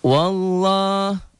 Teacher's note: Wallah tebal tafhim karena sebelum lafaz Allah baris di atas